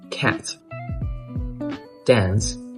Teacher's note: It's like something in between A and E, not the A sound.